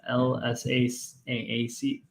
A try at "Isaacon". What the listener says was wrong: Isaacon? That's not an L, dude. That's an I. Isaacon.